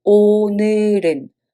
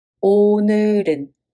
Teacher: When you pronounce it, it sounds like 오늘은 because the 받침 goes up to the following circle position.